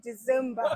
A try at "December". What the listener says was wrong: December. Are you saying I heard a Z in there.